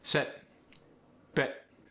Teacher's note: In the South African accent, you get a schwa sound, which is lazier.